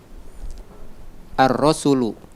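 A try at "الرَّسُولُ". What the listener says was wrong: Baca panjang pendeknya perbaiki. Ar-rasulu.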